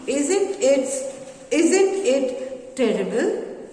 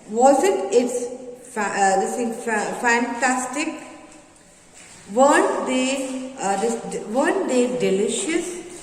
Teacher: So you will start with the high pitch and then it will be low. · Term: falling tone